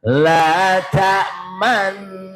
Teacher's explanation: Jadi gerakan mencucunya hanya satu harokat.